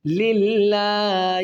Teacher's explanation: اللہ کے لام سے پہلے جب زیر آئے گی تو اللہ کا لام بریک کر کے پڑھیں گے